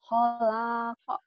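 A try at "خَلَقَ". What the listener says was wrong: Salah. Ini bukan Holako. Alif. Ho-nya pendek. Holako.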